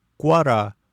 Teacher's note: Дифтонг уа с неслоговым у в начале встречается после ка в корне слов. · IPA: [u̯a]